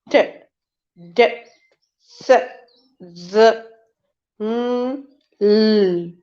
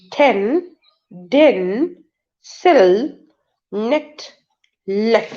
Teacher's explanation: blade of the tongue touches the upper border or inner region of the teeth ridge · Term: alveolar sound